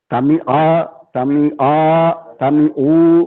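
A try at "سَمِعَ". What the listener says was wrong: سامیہ سامیہ سامیہ سامیہ سامیہ, زیادہ نہ کھینچو بچے, سامیہ سامیہ سامیہ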